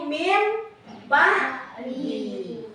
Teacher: apabila nun mati atau tanwin itu bertemu dengan satu huruf yaitu huruf ba, maka bunyinya akan berubah. Awalnya bunyi N menjadi M. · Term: iklab